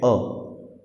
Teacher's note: अल्पप्राण मतलब जिसमें क्या हो रहा है, बोलने में श्वास कम बाहर निकलता है, वो अल्पप्राण कहलाता है।